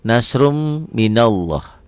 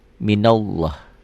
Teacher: Nasrun ini jadi nasrum, ini idgham bigunnah. Karena dhammah tain ketemu mim.